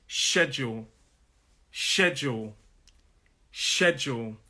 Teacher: So it's a 2-syllable word. It's 2 syllables, and the stress is on that first syllable.